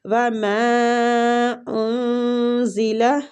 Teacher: میم کے اوپر جو مد ہے اس کو بھی مد جائز منفصل کہتے ہیں اور اس کی کھینچنے کی جو مقدار ہے وہ بھی 3 حرکات ہے